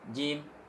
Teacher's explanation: Jim harus panjang, nggak boleh pelit. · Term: mad arid lis sukun